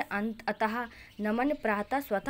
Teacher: उच्चारण के समय इसकी ध्वनि हा के रूप में निकलती है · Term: विसर्ग